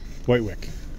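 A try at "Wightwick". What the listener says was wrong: Whittick. Yes, it's pronounced Whittick. It's not white and it's not witch. It's Whittick.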